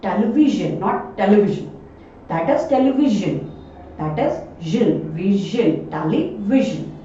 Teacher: इसके जस्ट आगे मैंने ये लेटर अंडरलाइन किया है, आप देखेंगे ये आई है और आई एक वाल होता है, तो ऐसे में SION का जो उच्चारण होगा वो हो जाएगा जन